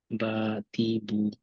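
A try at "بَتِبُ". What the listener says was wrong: টিতে একটু স্লাইড বেশি হয়ে গেছে হ্যাঁ বা তিবু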